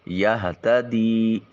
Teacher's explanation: فإنما ما کی ادائیگی کے وقت منہ کھلا رکھا جائے گا، الف خالی از حرکت ہے اور اس سے پہلے والے حرف میم کے اوپر زبر ہے، الف مدہ ہوگا، آواز منہ سے نکلنی چاہیے، ما نہیں ما۔ یہتدی ہا کو اقصی حلق سے تا بریک ادا کریں گے اور دی میں یا ساکن اور اس سے پہلے والے حرف دال کے نیچے زیر ہے یا مدہ، اس کو ایک الف کے قیم مقام لمبا کریں گے۔